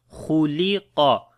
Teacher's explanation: Kha and qaf we read in heavy sound. Lam we read in light.